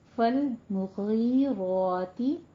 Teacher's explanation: المغی یا مدہ ہے، اس کو تھوڑا لمبا کھینچنا ہے 2 حرکتوں برابر، اور غین کو پر پڑھنا ہے، را کو پر پڑھنا ہے، اس کے اوپر فتح قائمہ ہے، اس کو 2 کاؤنٹ کرنا ہے.